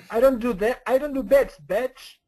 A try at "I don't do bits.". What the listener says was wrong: Bits. Keep that S.